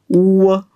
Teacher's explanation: या व चा उच्चार उ व सारखा होतोय म्हणून याला अर्ध स्वर म्हणलो आणि याचा उच्चार करत असताना नीट बघा याचा उच्चार करत असताना